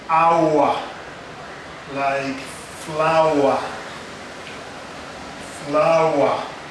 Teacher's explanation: This is a triphthong, meaning 3 vowels have come together and there is that glide of sound.